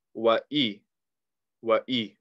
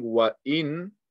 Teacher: We're just getting rid of the noon sound.